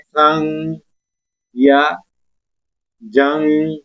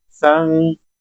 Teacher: अपनी जुबान का जो सिरा है ये तालु के साथ लगाएंगे और आवाज को नाक के अंदर चढ़ाएंगे, एक गुनगुनाने की आवाज पैदा करेंगे। जिस तरह हम पढ़ रहे हैं, जिस तरह लफ्ज है उर्दू में हम पढ़ते हैं संग या जंग, नाक में आवाज गई है इस नून की, जंग जंग कहेंगे तो देखे ना, तो ये नून हमारी नाक के अंदर चढ़ा है। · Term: इख्फा